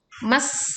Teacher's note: ditekan sinnya dengan suara suruit tajam dan tipis suaranya